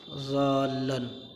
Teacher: لام کے اندر جماؤ اور ٹھہراؤ ہے، یہ شد کی وجہ سے ہے، اور ضاد کو جو ہم لمبا کر رہے ہیں یہ مد کی وجہ سے ہے